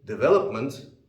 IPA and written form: dɪˈveləpmənt (Development)